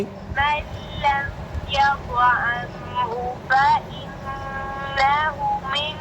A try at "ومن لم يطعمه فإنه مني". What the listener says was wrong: आपने फ़इन्नहु उल्टी पेश को लंबा नहीं किया फिर पढ़ो